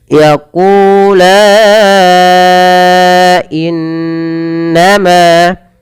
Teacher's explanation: yaitu di sini kita hukumi dengan mad jaiz munfasil, maka la-nya dipanjangkan 4 harakat. Yaqula innama, in tahan suara nunnya, bacaan gunnah.